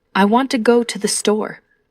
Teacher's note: In this sentence, want and store are stressed and the other words are said quickly and softly.